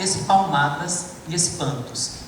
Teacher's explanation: a repetição de P e B, que são 2 consoantes explosivas